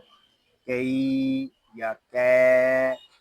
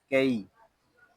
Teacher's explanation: یا لین ہو رہا ہے اور یا لین کو ہم کھینچ کر نہیں پڑھیں گے ، اس کو کئی یا کی اس طرح نہیں پڑھیں گے،